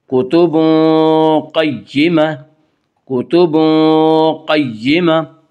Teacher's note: قاف کو پر پڑھیں گے، قاف حروف مستعلیہ میں سے ہے۔